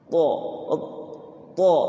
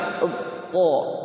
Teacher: Kalau th dia enggak ke depan si lidahnya itu tapi ke samping kanan